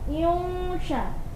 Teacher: Jadi shin itu huruf tebal, maka ketika mendengung sudah harus ditebalkan. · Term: ikhfa